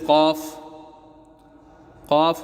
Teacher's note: قاف حروف لہویہ، زبان کی جڑ اور تالو کے نرم حصے سے